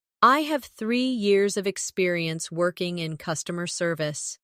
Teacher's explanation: Emphasize 3 years and customer service to highlight your strengths.